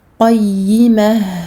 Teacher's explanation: Faites attention à bien donner à la lettre ha son temps de rakhawa, d'écoulement du son. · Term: ha sakin